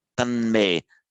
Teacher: So tan, so the tat by sandhi, tat me becomes tan me. The T becomes nasalized before the following nasal M.